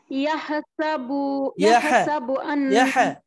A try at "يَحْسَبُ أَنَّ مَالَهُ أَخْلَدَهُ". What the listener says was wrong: এভাবে কিন্তু বাতাস ছুটে যাবে না ইয়াহসাবু শ্বাসটা ছেড়ে দিলেন কেন আবার মালাহু আখলাদা না শ্বাস ছেড়ে দেওয়া যাবে না মালাহু আখলাদা